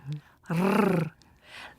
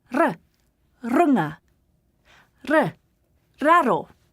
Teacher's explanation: Now both runga and raro have a uniquely Māori way of saying them. The r is quite short and rolled slightly, a bit like a cat purring.